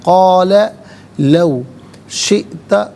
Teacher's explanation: حمزہ ساکن ہے، جھٹکے کے ساتھ پڑھیں گے